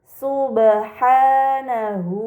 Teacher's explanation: terdapat ba sukun ini dinamakan qolqalah maka harus dibaca secara memantul